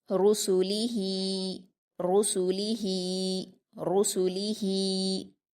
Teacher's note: لام پر حرکت، اس کو بھی جلدی پڑھیں گے۔ ہا پر کھڑی زیر ہے، اس کو بھی ہم یا مدہ کی طرح 2 حرکات کھینچ کر پڑھیں گے